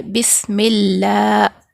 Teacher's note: با سین زیر بس پڑھیں گے. یہاں پر لفظ اللہ کے لام سے پہلے زیر ہے تو یہاں پر ہم اللہ کے لام کو باریک پڑھیں گے، بسم اللہ پڑھیں گے.